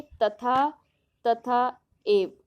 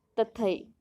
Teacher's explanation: तथा शब्द की अंतिम ध्वनि आ और एव शब्द की पहली ध्वनि ए परस्पर मिलकर ऐ हो जाती है और बनता है तथई। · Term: संधि